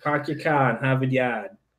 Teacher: New Englanders drop R's like you can't imagine